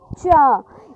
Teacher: इनका जो उच्चारण करते हैं इनका समय ज़्यादा लगता है और संघर्ष भी होता है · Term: स्पर्श संघर्षी व्यंजन